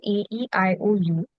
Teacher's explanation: So the vowels are generally very short and very stable.